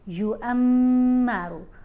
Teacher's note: یہاں میم کے اوپر ہم نے غنہ کرنا ہے، یُعَمَّرُ، را کو پر پڑھیں گے یعنی موٹا پڑھیں گے۔